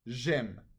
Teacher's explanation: The E in je is dropped and it becomes j'aime. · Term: elision